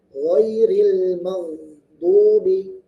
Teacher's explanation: Ghairil, ril, nah ghainnya dibaca tebal tapi dia mengalir.